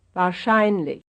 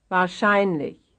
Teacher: Here's another one having its stress on the second to last syllable.